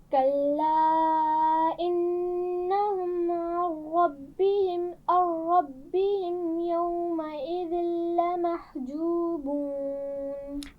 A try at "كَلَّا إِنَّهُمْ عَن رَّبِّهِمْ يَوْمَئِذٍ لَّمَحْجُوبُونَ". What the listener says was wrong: دوبارہ پڑھیے اور عن ربہم عین کا خیال رکھیے.